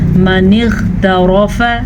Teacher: غین کو پر پڑھیں گے کیونکہ غین حروف مستعلیہ میں سے ہے، ہمیشہ پر پڑھا جاتا ہے